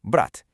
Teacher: Take the word for brother, brat. If you say brat harshly with a strong, hard T at the end, you're totally fine.